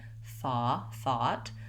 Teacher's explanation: the o u g h in the word thought is actually an ah vowel